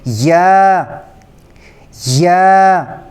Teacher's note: اگلا یہ والا حرف یا، یہ دو حروف سے مل کر بنا ہے یا اور الف، اس لیے اس کو ہم ایک الف کی مقدار کھینچ کر پڑھیں گے